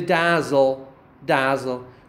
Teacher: second syllable the second syllable is all really a consonant yes le can sometimes in american english can act like a vowel which makes a syllable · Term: syllabic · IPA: [dæzl̩]